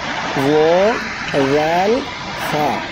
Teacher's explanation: জিহ্বার আগা সামনের উপরের 2 দাঁতের আগার সঙ্গে লাগাইয়া 3টি অক্ষর উচ্চারণ হয় ও, রাল, হা